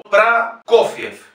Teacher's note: Fíjense que la primera O no está acentuada, por lo tanto es Pra.